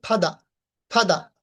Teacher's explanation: ফাদার বলে থাকি, কিন্তু আমরা উচ্চারণ করব ফাদা, ফাদা, আরটা উচ্চারণ করব না